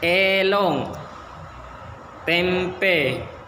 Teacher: E adalah vokoid depan setengah rende tak bulat.